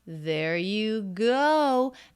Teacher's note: diphthong you will need some lip rounding for that there you going up in pitch going up in energy and volume